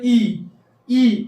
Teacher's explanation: अब अग्रस्वर में क्या होता है कि जो हम जिह्वा, जैसे बोले ई, अगर आप बोलेंगे तो ई क्या होगा, आपके जो जिह्वा है उसके बाहरी भाग से निकलेगा